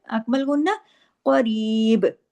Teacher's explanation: काफ को हैवी करना है बा पे पे कलकला करना है